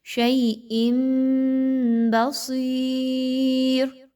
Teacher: اقلاب کرنے کی صورت میں آپ نے یہاں پہ تنوین کی آواز کو نہیں پڑھنا بلکہ نون ساکن یا تنوین کی جگہ میم کی آواز نکالی جائے گی